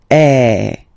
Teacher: the sound is really open, and normally your mouth should be opened a little bit more than with the accent aigu as well. Okay, so it goes like A. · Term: accent grave